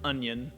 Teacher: approximate this sound by making an n sound followed by a y sound